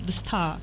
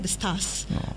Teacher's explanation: R-nya masih ada, tapi kalau British kan benar-benar hilang. Kalau di belakang itu benar ditutup the star.